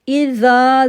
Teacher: زال کو سافٹ کریں گے اور 2 سیکنڈ کے لیے کھینچیں گے بھی